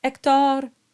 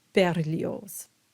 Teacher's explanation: we have the open O on Hector, and we have the closed O on Berlioz